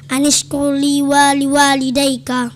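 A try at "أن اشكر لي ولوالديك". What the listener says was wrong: panjangan wali walidaik ilayal masir sambungannya ya.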